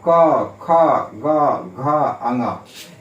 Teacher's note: कंठ से किन किन वर्णों का उच्चारण होता है, क का, ख का, ग का, घ का और अंग का। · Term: कवर्ग